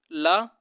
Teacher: ठीक है, पार्श्विक, पार्श्व व्यंजन बोला जाता है, यानी जीभ के पार्श्व भाग से बोला जाता है, यानी जीभ के बगल से बोला जाता है। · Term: पार्श्विक व्यंजन